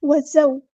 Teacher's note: زا کو سختی سے ادا کرنا ہے اور مدلین ہو رہی ہے، نرمی سے موڑنا ہے